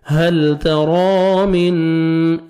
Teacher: نون ساکن کے بعد 15 لیٹرز میں سے فا ہے، نوز میں ساؤنڈ لے کے جائیں گے